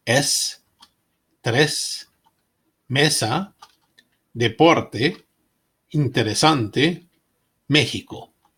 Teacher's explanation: Like the sound E in they, but without the Y glide.